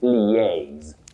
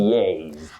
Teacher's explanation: But when you have that L-I-A, you begin with li. Then you go to A. A is stressed. So you say liaise.